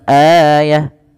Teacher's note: ta marbutah bila diakhirkan dia diganti dengan huruf ha yang disukunkan dan dimatikan